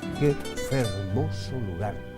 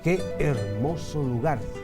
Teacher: después la F fue convirtiéndose en H ya muda perdió su sonido y lo de formosus formosa formosum pasó a ser hermosos hermosa